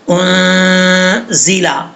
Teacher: زا سیٹی کے ساتھ پڑھا جائے گا